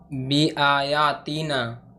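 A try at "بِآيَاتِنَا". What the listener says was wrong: तीना नहीं होगा यहाँ पे, यहाँ पे या मद्दा नहीं है ना, तीना।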